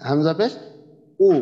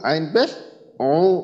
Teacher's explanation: হামজার ক্ষেত্রে যেটা হবে সেটা আওয়াজটা পুরোপুরি আসবে, আর আইনের ক্ষেত্রে আওয়াজটা একটু চাপা আওয়াজ হবে, অর্থাৎ গলা থেকে গলাটা কিছুটা আর কি সংকুচিত হবে আর কি, গলার মধ্যখানটা, কণ্ঠনালীর মধ্যখানটা।